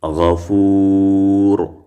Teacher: نو چې ډېر اوږد کوي د درې الفو مقدار نو طول دی · مونږ دا واو چې اوږد کو د درې الفو مقدار دا به طول شي غفور. ګورې غفور اوږد شو.